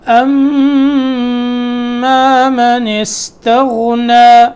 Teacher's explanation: یہاں غنہ کرنا ہے، میم مشدد ہے